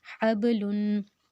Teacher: اب اس میں جو با ہے وہ حروف قلقلہ ہے، اس کو ہم ہلا کے پڑھیں گے